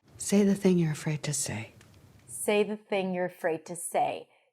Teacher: So we have say, stressed, thing, stressed, afraid, stressed, say, stressed. All the content words are stressed here.